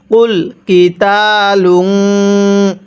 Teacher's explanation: কফটা উচ্চারণের সময় গলার মধ্যে ধাক্কা দিয়ে পড়ব